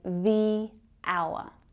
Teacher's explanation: we have the H consonant sound that is silent. So the first sound that we hear in the word hour is a vowel sound.